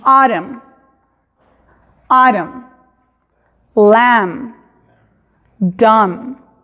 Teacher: No se pronuncia ni la B ni la N. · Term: muda